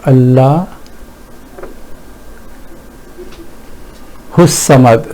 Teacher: we have gone straight to swad, which is in this case, because it's a sun letter, so we have not even pronounced lam here, and we have totally ignored alif, this, which is actually hamza.